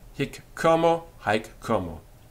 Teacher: the H of homo, or words like it, will be elided and assimilated into the previous hic or haec.